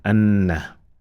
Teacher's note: we applied what is called Ibharul Ghunna. We produced a nasal sound from our nose. And if you block your nose, you should not be able to produce it.